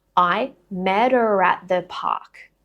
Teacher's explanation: So we're again taking the t from the end of met, linking it to the vowel from her, and then take it one step further with linking. I'm using a linking R of her, linking it with at.